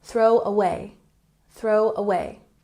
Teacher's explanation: We emphasize the second syllable in away.